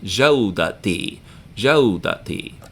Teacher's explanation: So if it's my talent, then it becomes jawdati. And ta marbuta, because it means tied up ta, transforms back into regular ta.